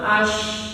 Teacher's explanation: Menyebar di mulut udara atau angin menyebar di mulut Nah, di situ tidak ada makhraj dengan bibir monyong, nggak ada makhraj di situ. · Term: huruf sya